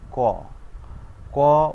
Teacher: ক উচ্চারণ করলে এর সাথে অ চলে আসে, এই জন্য ক প্লাস অ, অর্থাৎ উচ্চারণের সুবিধার জন্য বাংলা ব্যঞ্জন বর্ণে অ স্বরধ্বনিটি যোগ করে উচ্চারণ করা হয়। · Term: ব্যঞ্জনধ্বনি